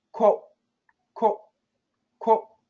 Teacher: in normal speech, we don't go oh, we just go quote, quote, quote. We just go to the T and stop.